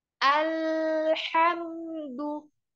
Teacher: pada huruf lam sukun, ya, membacanya jangan sampai kepantul. Sempurnakan harokat lamnya. Ya, jadi huruf lam sukunnya itu ujung lidah kita yang ini ketemu sama gusi yang atas.